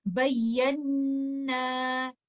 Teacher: میں نے اس کو 2 کاؤنٹ اسٹریچ کیا کیونکہ یہاں پر الف مد تھا ، الف ساکن ہے اور اس سے پہلے فتحہ ہے تو